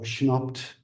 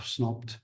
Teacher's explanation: instead of clusters with s, she would say sh